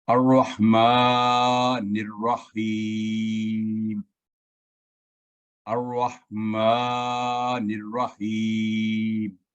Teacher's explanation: الرحیم کو ملا کر پڑھتے وقت حمزۃ الوصل کو تلاوت میں شامل نہیں کرتے اور نون کو را کے ساتھ ملا کر پڑھتے ہیں · الرحمن سے تلاوت شروع کرتے وقت حمزۃ الوصل کو فتح کے ساتھ پڑھتے ہیں، یہ مخصوص ہے یہاں پر.